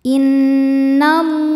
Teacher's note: lam berharakat fathah berdiri maka lam kita panjangkan dua harakat